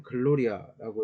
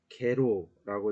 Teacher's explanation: G는 항상 이것도 역시 경음 발음이 난다고 해요.